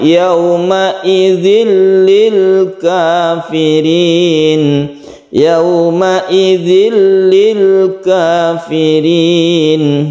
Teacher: Kalau tasydid itu kita tabrakkan ke lamnya, kita tekan ke lamnya. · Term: tasydid lam